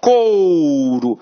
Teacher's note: tá vendo que tem o som de ó mesmo ó couro e o u vai ser a semivogal